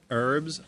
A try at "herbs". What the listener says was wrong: It's herbs where I come from. We pronounce our H's.